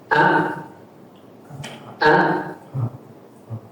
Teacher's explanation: huruf hamzah memiliki sifat asyiddah, yaitu tertahannya suara ketika mengucapkan huruf tersebut, yang merupakan lawan dari sifat ar-rakhawah.